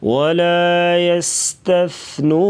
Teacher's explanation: لَيَصْرِمُنَّهَا مُصْبِحِينَ مُصْبِحِينَ اذ اقسموا لَيَصْرِمُنَّهَا مُصْبِحِينَ وَلَا يَسْتَثْنُونَ یس سیٹی جیسی آواز سا کو نرمی سے ادا کیا جائے گا، سین اور سا میں فرق کر کے پڑھیں گے